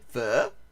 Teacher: I mean, and yes, it is true that O with that little thing on the side there is an sound, and it has a rising falling intonation